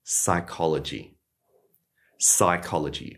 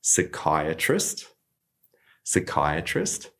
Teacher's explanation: we can just completely ignore that P